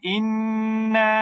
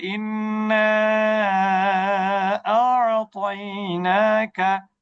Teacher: এরপর দেখেন ইন্না বলে কেউ থেমে গেলে এক আলিফ মাদ হবে। কিন্তু যদি কেউ বলে ইন্না আ'তাইনাকা, তখন কিন্তু তিন আলিফ মাদ হবে, চার হারাকা, তখন এটা মাদ্দে মুনফাসিল হবে।